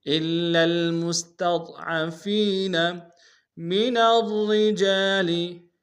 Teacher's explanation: را کو موٹا ادا کریں گے، شد زور دیں گے